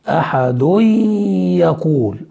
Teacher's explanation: أدغمنا التنوين في الياء